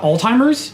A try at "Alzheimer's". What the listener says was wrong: Well, there is no T in Alzheimer's. It's spelled with Alzheimers. A lot of people call it Alzheimer's or old timers, but it's not timers at all.